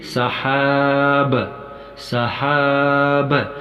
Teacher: اس آخری حرف با کو ساکن یعنی ٹھہرا کر پڑھا جائے گا، اس کی آواز ٹھہری ہوئی نکل جائے گی